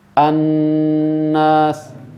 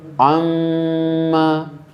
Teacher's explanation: Kalau nun tasdid buka mulutnya. Annas misalnya. Kalau mim baru tutup mulut.